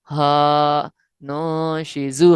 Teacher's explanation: کہ الف سے پہلے والے حرف پر اگر زبر آ جائے تو الف مدہ ہوگا، اس کی مقدار بھی 2 حرکات کے برابر ہے